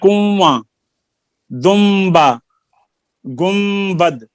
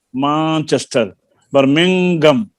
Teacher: اخفا کے معنی چھپانے کے ہیں، یعنی نون کو ادا کرتے وقت زبان کو مخرج کے اندر نہیں لگانا، تھوڑا سا دور رکھنا ہے